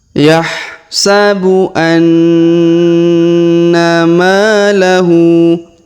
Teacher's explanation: huruf na idgham ya atau dengung. Maka kita tahan dan tekan 2 sampai 3 harokat.